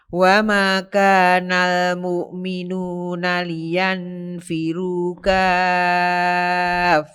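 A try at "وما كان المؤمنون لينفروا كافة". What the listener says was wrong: Kurang ditekan kaf.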